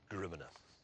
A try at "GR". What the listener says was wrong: It isn't Grimina, there's no at the end. It says Grim.